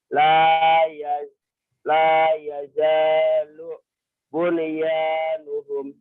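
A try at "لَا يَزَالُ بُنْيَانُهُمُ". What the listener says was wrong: Udah bisa tapi salah nekennya. Nih dengerin ya. La yazalubun. La yazalubun. La yazalubun yanuhum. Bukan la yazalubun yanuhum. Nggak boleh ya. Karena suka ketinggalan gitu.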